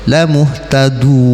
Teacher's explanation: Dal itu kalau harokat domah dia tebal